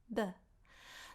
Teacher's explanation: Make sure that you keep those T's dental and you don't aspirate them. An aspirated T sounds like this, t, versus a dental sounds like this, the.